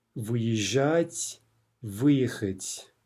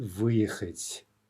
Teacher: in the perfective, the stress is always going to be on the вы